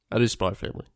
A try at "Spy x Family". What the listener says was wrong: You're wrong. You're wrong. X is a letter, and they put it in there. It's not a silent letter. It's in the title.